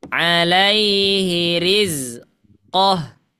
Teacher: kalau kita waqaf, qafnya nggak boleh panjang karena dia bukan mad